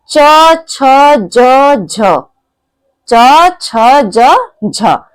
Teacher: च छ ज झ इनको बोलने में हमारी जीवा जो है वह हमारे तालू को छूती है इसी के लिए इसको बोलते हैं ताल वर्ण तो इस हमारा